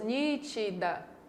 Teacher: A palavra nítida tem 3 sílabas, nítida. E a sílaba mais forte é a antepenúltima.